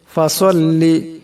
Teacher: ফাসাল্লি, এখানে সওয়াদ আছে। সওয়াদের আওয়াজটাকে মোটা করে পড়তে হবে।